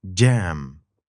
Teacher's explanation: this is a d and a j sound combined in one